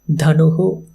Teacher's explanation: because of visarga sandhi, the shakara or sakara, they gets transformed into visarga